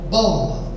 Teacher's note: Bó é a sílaba tônica, que eu ouço melhor, mais alto